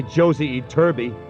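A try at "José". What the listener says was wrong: It's not Josie, it's Jose. In Spanish, J is pronounced like H.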